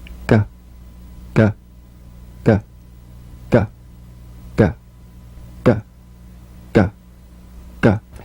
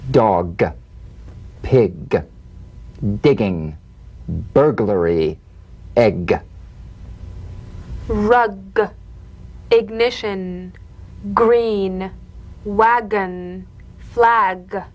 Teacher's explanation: a voiced pulsation of the back of the tongue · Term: drum beat G